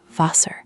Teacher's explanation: When R comes at the end of a word, or in an unstressed ending, Germans barely pronounce it as a consonant at all. It softens almost into a vowel sound.